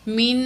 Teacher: تو یہاں جو ہے نون ساکن کے بعد قاف ہے، حروف اخفاء میں سے ہے، تو یہاں ہم نون کی آواز کو ناک میں چھپا کے پڑھیں گے.